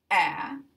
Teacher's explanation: And for this vowel, A, the tongue is going to move forward. It's a low vowel, meaning that the tongue is low. And these are front vowels, meaning that the tongue is going to move towards the front. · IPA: æ